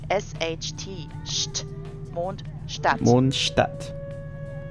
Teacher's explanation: but not sharp t sound st is usually pronounced like an sh sound plus a t sound combined